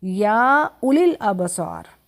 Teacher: یہاں واو نہیں پڑھی جائے گی، واو کو حذف کر دیں گے